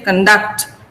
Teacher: I'm stressing duct. So I say conduct. This is a verb.